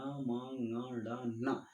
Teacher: इन वर्णों का जब हम उच्चारण करते हैं तो मुख और नासिका दोनों का हम उपयोग करते हैं प्रयोग करते हैं तब जाकर हम इसका उच्चारण कर पाते हैं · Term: अनुनासिक